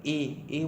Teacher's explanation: और ए बोलते हैं तो भी हमारा जीभ का अगला सिरा दांतों में लगता है और थोड़ा सा सिकुड़ता भी है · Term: अग्रस्वर